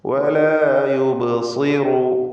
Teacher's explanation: ബഇൻ്റെ സുക്കൂൻ ഖൽഖല സുഗ്റ നൽകി ശബ്ദം ചലിപ്പിക്കണം. സ്വാദ് തഫ്ഖീമിൻ്റെ അക്ഷരമാണ്, ഇസ്തിഅലാഇൻ്റെ 7 അക്ഷരങ്ങളിൽപ്പെട്ടതാണ്. കസ്ർ വന്നതിനാൽ കുറഞ്ഞ തഫ്ഖീം കൊടുക്കുക